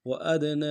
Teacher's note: سے ادا کریں گے، حمزہ کو دال کے ساتھ ملانا ہے، دال حروف قلقلہ سے قلقلہ کریں گے ، نون کے اوپر کھڑا زبر بھی ہے، مد عارض بھی